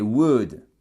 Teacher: on ne prononce pas le l